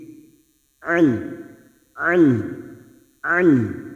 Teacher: ini adalah huruf Ain bukan Hamzah maka cara membacanya rongga tenggorokan bagian tengah lebih menyempit